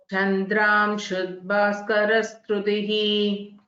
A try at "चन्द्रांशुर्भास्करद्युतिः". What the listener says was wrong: You again it is same. Half the yakara. Chandramshur Bhaskara Dyutihi.